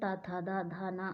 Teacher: और ता वर्ग दंत से बोलते हैं